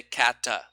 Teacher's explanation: they put a little schwa there